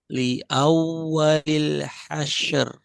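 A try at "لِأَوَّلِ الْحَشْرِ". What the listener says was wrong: Masih kurang tebal. Ser, ser. Itu tipis. Ser, syaro, syaro. Hasyaru, hasyaru. Li awwalil hasyaru. Ro di sini kan, roknya sukun, sebelumnya fathah.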